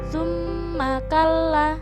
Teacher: ada Suma Kalla bacaan ini disebut juga bacaan nuwun Nah karena terdapat huruf mim yang bertasydid maka cara membacanya juga mendengung dua ketukan atau satu Alif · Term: bacaan ghunnah